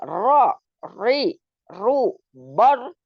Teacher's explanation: huruf yang keluar dari ujung lidah agak ke dalam jadi tetap di lidah tapi agak ke dalam kemudian mengenai gusi gigi seri pertama yang atas jadi seperti Nun cuman kalau ro itu agak ke dalam jadi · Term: huruf ro